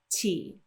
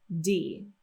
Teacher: d with vibration it sounds like the one I have highlighted if we get rid of that vibration and it's voiced less then it's going to sound like T